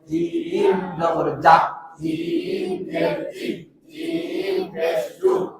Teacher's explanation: জিম জিব্বার মাঝখান থেকে শক্তভাবে আদায় হবে